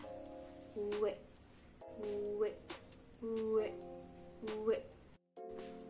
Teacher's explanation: Huruf W dilafalkan dengan cara bibir atas dan bibir bawah mengatup, namun tidak saling menekan. Selanjutnya udara keluar lewat celah-celah yang terjadi ketika bibir atas dan bibir bawah mengatup.